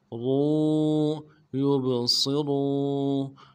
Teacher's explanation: یوب صاد کو موٹا ادا کرنا ہے، را کو واو کے ساتھ ملانا ہے، واو مدہ ایک الف دال میں کھینچیں گے